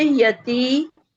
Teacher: या फतह, या नहीं सॉरी, या पे फतह एक हरकत पड़ी जाएगी जी, और ता के बाद या मद है, तो ये 1 काउंट नहीं 2 काउंट करेंगे इसे